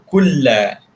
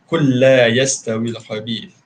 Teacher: Lam mati, lam berbaris, hukum idgham mutamasilain sama macam sebut tadi kan. Idgham mutamasilain, masukkan lam yang pertama ke dalam lam yang kedua. Kulla. So satu dia bunyi lam yang kedua saja.